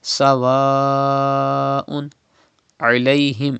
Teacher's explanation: It is ain pronounced from the middle part of your throat. Do not say alayhim.